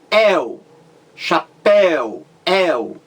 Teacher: Quando você diz el, chapéu, el, é aberto. Então você tem ditongo aberto.